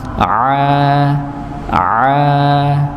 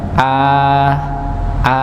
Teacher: Sedangkan huruf ain ditekan a nggih bagian tengah tenggorokan. Nah, di situ ada katup tenggorokan yang mendorong pada dinding tenggorokan.